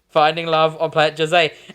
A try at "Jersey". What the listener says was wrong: I don't like how you pronounce that. It sounds like Finding Love on Planet Jose. It ended as like Jizzy, you know.